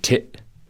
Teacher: glottal stop when you drop the t